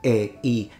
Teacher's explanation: version a diphthong version several versions for instance in this case when you say game really you're pronouncing a e so it's two different vowels that are conjuncted together